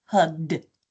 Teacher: that ed is gonna be represented by a voiced sound, d